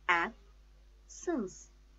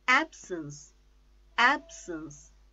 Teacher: The stress is on first syllable.